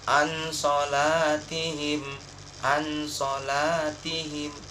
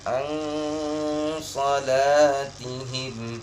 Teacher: Ketika nun bertemu dengan huruf sad yang Bapak baca tadi, maka bacanya huruf ikhfa. Bacanya ikhfa, yaitu samar dan didengungkan. Bukan seperti izhar, jelas bacanya.